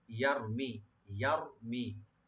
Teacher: ইয়ারমি ইয়াটাকে open রাখবেন আর রা একটু ডিপ হবে, আর মিমে কোনো টান হবে না, শুধু মি বলবো। ইয়ারমি, ইয়ারমি রা ডিপ হবে।